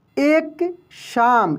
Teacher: तो तालव्य श का उच्चारण तालु से होता है